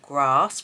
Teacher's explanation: In the north, generally, you say grass, and in the south, where I live, we say grass. We use a longer vowel sound. Particularly in the county that I live, we tend to use a really long vowel sound in our words.